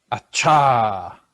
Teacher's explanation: Make it breathier, more breathy. Acha. That's perfect.